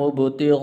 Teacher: یہ بڑی مد ہے، اس کو 5 الف کے برابر لمبا کرتے ہیں